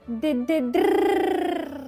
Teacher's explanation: почала заводити моторчик. сильно тремтіла язичком